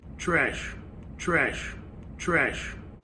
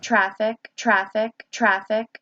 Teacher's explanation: in Philadelphia, those are not some of those trap words that are going to get raised